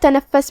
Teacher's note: فا پہ تشدید ہے تو 2 حرف کے برابر ہمیں فا کو پڑھنا ہے